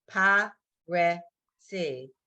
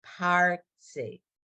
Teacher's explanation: The resh ends a syllable. It's not its own by itself. It's Parsi.